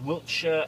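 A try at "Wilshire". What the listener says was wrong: Wiltshire? Not There's no T in it.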